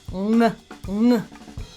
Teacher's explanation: the ng sound in English, which is made with the back of the tongue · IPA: /ŋ/